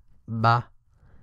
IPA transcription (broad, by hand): b